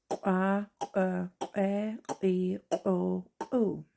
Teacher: explosive back KW with the vowels